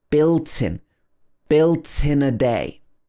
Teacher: So built and in connect together.